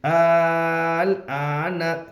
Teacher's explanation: حمزہ کے اوپر کھڑا زبر ہے, کھڑا زبر برابر ہے الف مدہ کے اس لیے کھڑا زبر کو ایک الف کے برابر کھینچ کر پڑھے. نون کے اوپر زبر ہے, زبر کو جلدی پڑھے تھوڑا بھی نہ کھینچے.